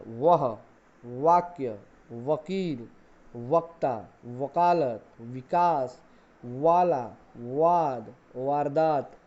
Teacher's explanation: व एक दंतोष्ट वर्ण है, यानी दांत और ओठ दोनों से बोले जाने वाला व